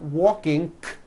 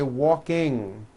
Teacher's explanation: Ing comes out of your nose. It's a combination of an N and a G, and it is found at the ends of words like ring and sing. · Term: NG ending